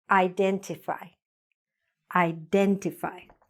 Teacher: the stress is on den, but the pronunciation problem is usually in the beginning.